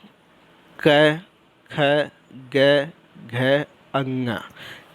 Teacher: क वर्ग के अंतर्गत जितने भी आते हैं वो हमारा कंठ के आते हैं